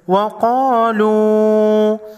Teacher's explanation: قاف حروف مستعلیہ میں سے ہے، موٹا پڑھیں گے